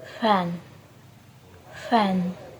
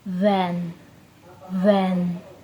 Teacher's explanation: F is a voiceless labiodental fricative, while V is voiced labiodental fricative. Both are made by touching the top teeth to the bottom lip.